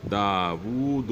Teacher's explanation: اس کو ایک واو کے برابر کھینچا جائے گا، گویا کہ واو دوسرا واو ہے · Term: الٹا پیش